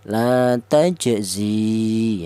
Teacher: Alasannya ada ya mati yang didahului huruf yang berharakat kasrah yaitu panjangnya satu alif atau dua harakat atau dua ketukan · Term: mad thobi'i